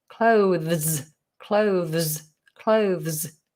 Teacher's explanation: you have the TH, which is a fricative at the front of the mouth with the tongue poked out. And then you've got another fricative, which needs the tongue to be in.